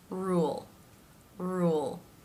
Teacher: ends with the tip pressing against the roof of the mouth just behind the top teeth